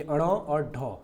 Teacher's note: उत्क्षिप्त व्यंजन किसको बोलते हैं कि जिसके उच्चारण में जिह्वा की उल्टी हुई नोक तालों को छूकर झटके से हट जाती है। मतलब इसका जो डेफिनेशन है, जो जीव है, जो हमारा मतलब जिसको बोलने के लिए हम एक बार जीभ से टच करते हैं बॉडी को नीचे और फिर उसको अचानक से झटके से हटाते हैं, तभी वो आवाज़ निकल पाता है।